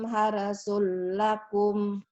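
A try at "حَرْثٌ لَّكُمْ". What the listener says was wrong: Harsul lakum. Harsul lakum. Itu setiap ada huruf mati, penyakitnya di situ. Terutama lam sama bak mati. Nisa'ukum harsul lakum. Harsul lakum.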